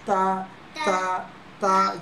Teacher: জিহ্বার আগের অংশ দাঁতের উপরের অংশ লাগবে। জিহ্বার আগের অংশ দাঁতের উপরের অংশ।